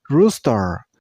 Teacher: This name has also 2 syllables, and while you pronounce the word, you also stress on the first syllable.